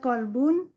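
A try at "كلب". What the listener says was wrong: Kalbun pakai kaf ya. Kalau pakai kof, ya. Kalau pakai kof, kolbun artinya hati. Kalau pakai kaf, anjing. Kalau ini kalbun pakai kaf.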